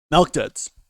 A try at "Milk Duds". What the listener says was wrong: Oh God, you're calling them Malk Duds too. You're saying Malk Duds.